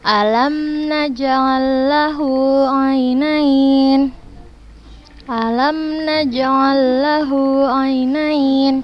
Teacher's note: Naj'al lahu langsung dimasukkan ke huruf lam yang kedua. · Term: idgham mutamatsilain